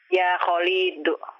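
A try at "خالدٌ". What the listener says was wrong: Lamnya jangan dipanjangkan. Ya Khalidu.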